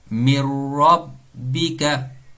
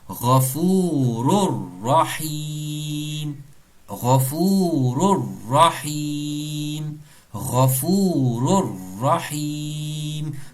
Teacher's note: nous pouvons faire une fusion, un idgham kamila complète, nun tombé, nun disparaît.